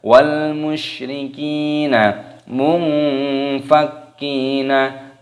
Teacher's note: nun sukun bertemu dengan fa, hukumnya dibaca ikhfa, disamarkan. Munfakkina, kafnya dibaca tasdid, ditekan, dimasukkan, diidghamkan.